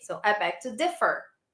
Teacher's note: the stress in differ is on the first syllable